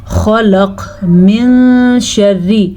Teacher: نون ساکن کے بعد شین حروف اخفا میں سے ہے تو نون چھپے غننے کے ساتھ پڑھیں گے